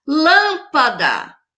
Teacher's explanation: A lâmpada teve a antepenúltima sílaba forte.